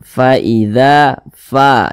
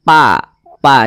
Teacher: ketika kita mengucapkan huruf fa, maka ada nafas yang mengalir ketika kita mengucapkannya. Faida, fa, jangan pa, jangan fa, faida, begitu. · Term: sifat hamz